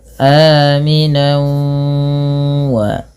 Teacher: Di sini masukkan tanwinnya pada lafal wau. Karena ia bacaan idgham bighunah. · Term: idgham bi gunnah